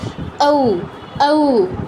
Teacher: এটা গঠিত হয় আ আর উ নিয়ে